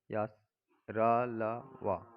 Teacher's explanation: ये व्यंजन चार होते हैं या र ल व। इनका उच्चारण जीभ तालु दांत और ओठों के परस्पर सटाने से होता है, किंतु कहीं भी पूर्ण स्पर्श नहीं होता, अतः ये चारों अंतस्थ व्यंजन अर्धस्थ स्वर कहलाते हैं।